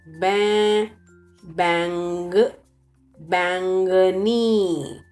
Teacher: Do you see N is underlined in the word? That is for nasal sound. It's not to be pronounced.